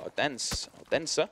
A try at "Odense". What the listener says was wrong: There's no D.